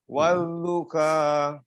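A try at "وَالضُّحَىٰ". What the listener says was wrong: wadduha. Jangan kayak kaf ya. Wadduha, ingat di tengah tenggorokan.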